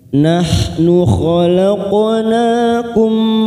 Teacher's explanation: qaf sukun qalqalah sugro kita pantulkan